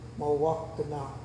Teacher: You sound out the different syllables and then put them together. M is a syllable by itself